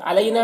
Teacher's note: یا لین ہے، اسے نرم آواز کے ساتھ جلد پڑھیں گے